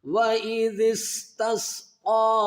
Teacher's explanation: قوف کو ایک الف کی مقدار کھینچیں گے اور سین کو بھی ایک الف کی مقدار کھینچیں گے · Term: کھڑا زبر